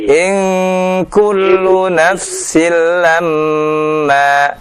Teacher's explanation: Idgham bila gunnah ya, tidak ditahan dua harokat ya. Hanya satu harokat saja ya.